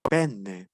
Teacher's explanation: si se dan cuenta la e es más abierta que la normal